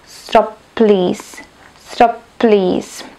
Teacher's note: ťažké povedať Please preto sa tam vlastne robí tá malá pauzička dokonca aj tá posledná spoluhláska z prvého slova tam akoby vôbec nebola